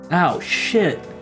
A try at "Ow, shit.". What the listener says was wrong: You gotta put more emphasis on that shit. Because it's supposed to be painful. So you gotta have that emphasis on that shit.